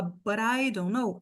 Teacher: aí vira o flap T, né? Que para nós é um R.